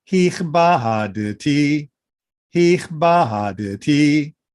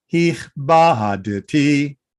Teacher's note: since the next letter is the exact same vocal apparatus positioning, I need to release my dalet in order to then quickly turn it into a taf.